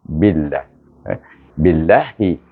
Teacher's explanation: Idgham syamsi kan huruf Ba ni dengan huruf Lam di sini. Oleh kerana Ba baris bawah, kita baca dengan nipis.